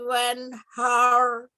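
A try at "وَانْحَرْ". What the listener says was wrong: Ya, nah haknya nggak panjang ya, nggak wanhar. Langsung wanhar. Ulangi.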